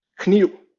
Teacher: So kniv, K-N-I-V. The last letter, that would be a V historically, but has been weakened to a U kind of sound.